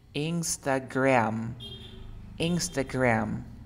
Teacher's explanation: Yo digo como si fuera una E que se va transformando en A.